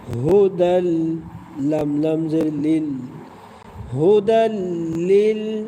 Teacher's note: দুই জবর আছে দুই জবর মানে তানবিন তানবিনের পরে লাম এসেছে লাম হল ইদগামে বেলাগুন্না অর্থাৎ গুন্না ছাড়া মিলিয়ে পড়তে হবে